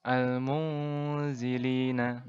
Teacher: cara membacanya adalah dengan cara samar-samar dan dengungnya dipanjangkan 2 harokat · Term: ikhfa hakiki